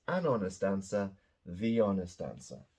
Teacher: these are pronounced with an O at the beginning not an H the H is silent